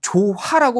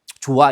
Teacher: 받침 히읗이 모음으로 시작하는 형식 형태소와 결합하는 경우에는 히읗을 하지 않는다?